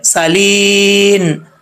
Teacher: سین میں سیٹی آئے گی بریک ہے